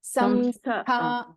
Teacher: Tha should be Mahaprana.